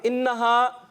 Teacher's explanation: نون پہ تشدید آ جائے تو ہم نے کیا کرنا ہے, غنہ کرنا ہے ایک الف کا